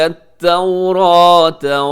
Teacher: یہاں تورات میں را موٹی پڑی جائے گی